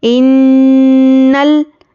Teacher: नून पर जब भी तशदीद हो तो गुन्ना करना है, और गुन्ने की मिक़दार एक अलिफ के बराबर है। नाक में थोड़ी देर आवाज़ को रोकना गुन्ना कहलाता है।